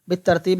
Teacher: بالترتیب میں الف لام نہیں پڑھا جاتا، با کو تا سے ملاتے ہیں